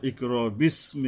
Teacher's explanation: নিচের মারির মাঝখানের যে বড় যে দুইটা দাঁত আছে, এখানে এসে জিহ্বা মিলবে এই সিন উচ্চারণ করার সময়